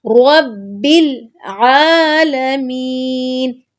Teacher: عین کو حلق کے درمیان سے نکالنا ہے، اس کے بعد عین پہ کھڑی زبر ہے تو عین کو لمبا کریں گے.